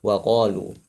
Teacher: Qaf itu kuat ya sifatnya, itu jahar dan syiddah.